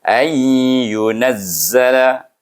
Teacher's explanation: Nun sukun bertemu dengan ya, hukumnya apa? Iaitu kita kena baca dia dengan idgham ma'al gunnah, iaitu dia idgham nakis.